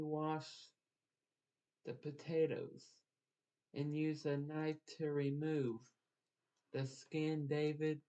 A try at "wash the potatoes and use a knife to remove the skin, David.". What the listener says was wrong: Take a breath, because you need a breath between so people know that skin was the last word.